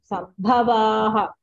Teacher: సంభలో భా మహాప్రాణ చెప్పలేదు మీరు